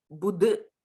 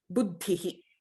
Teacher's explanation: the Mahaprana is in the last consonant and not the consonant right after the ba, right after the bu.